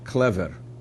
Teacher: in standard ukrainian both the L and the V are hard